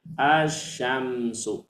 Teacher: walaupun di sini lamnya di tulis tapi dia seolah-olah hilang jadi bacanya asyamsu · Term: Syamsiah